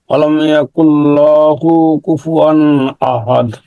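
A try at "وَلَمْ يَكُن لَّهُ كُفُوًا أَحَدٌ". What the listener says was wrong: হ্যাঁ, এখানে আপনি ওই যে এই পেশের উপর এদিকে আপনি লামের উপর আর কি মাত দিয়ে দিচ্ছেন, এটা যেন না হয়। অলামিয়া কুল্লাহু কুফুয়ান আহাদ। কুল্লাহু কুফুয়ান আহাদ।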